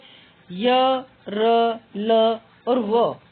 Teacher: है अंतस्थ व्यंजन अंतस्थ का अर्थ है अंदर या बीच में जिन व्यंजनों को बोलते समय जीव मुख के किसी भाग को पूरी तरह स्पर्श नहीं करती उन्हें अंतस्थ व्यंजन कहते हैं यह ध्वनियां स्वर और व्यंजन के बीच की स्थिति में होती